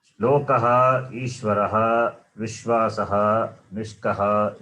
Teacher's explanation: In all these words, Visarga is preceded by the letter A. Therefore, Visarga takes a sound of the vowel A.